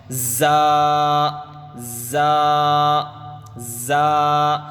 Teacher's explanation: یہ زا زا زا، اس کو سختی سے ادا کرنا چاہیے، زبان نیچے کے دانتوں کو لگتے ہوئے سختی سے ادا ہوگا